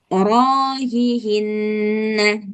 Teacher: Rohnya panjang 2 harkat